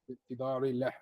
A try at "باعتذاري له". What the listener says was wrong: Okay, the ain, push your tongue back a little bit more. Okay, you're saying باعتذاري, but there's a ya there that's going to make it like another meaning. باعتذاري له. باعتذاري.